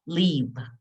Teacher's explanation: the sound at the end is v, with your lip under your teeth